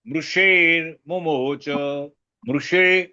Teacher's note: बिल्कुल जीभ मुरधन्य में जाएगी जो कैविटी बनती है मुंह की वहां जाएगी